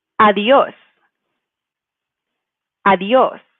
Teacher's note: if we were following the rule, we should probably stress the E the second to last vowel, but we actually should stress the O.